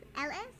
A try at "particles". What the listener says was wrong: Close. You're missing a vowel.